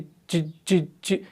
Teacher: आप अगर करेंगे जीम, जब आप जी जी जी कर रहे हैं ना, पहले ही देखिए, अभी आप पूरा जीम को ना पढ़े, आप करें जी जी जी जी, तो देखिए जुबान का जो बीच वाला हिस्सा है ये ऊपर लग जाता है, तो मालूम हुआ कि वस्ते जुबान से ही इसका मखरज है